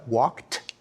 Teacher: when we say he walked we pronounce the ed like a t like a t walked when we say jogged we pronounce it